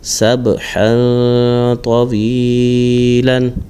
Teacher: اب یہاں پر با ساکن ہے، اس میں قلقلہ کریں گے اور تنوین کے بعد تو آ رہا ہے تو یہاں پر اخفا یعنی غنہ کر کے پڑھیں گے۔